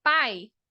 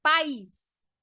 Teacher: o ditongo quando você fala pai ele tá tudo junto o hiato país você vê que já mudou vai vir em sílaba separada